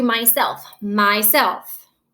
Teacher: what again is stressed it is self